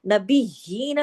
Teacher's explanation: सख्ती से जोड़ना है या को, और खड़ी जेर भी है, उसका भी हक अदा करना है